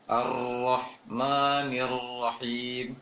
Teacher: Namun harus tetap bergetar. Hanya saja tidak banyak jumlah getaran di ujung lisan ketika mengucapkan ro. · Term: ro yang bertasydid